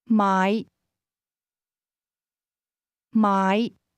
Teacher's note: to buy is pronounced with a low rising tone.